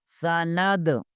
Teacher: آواز آنی چاہیے، سین۔ نون کو دال کے ساتھ ملائیں گے، دال ساکن ہے، دال حروف کلکلہ میں سے ہے، یہاں پر کلکلہ ہوگا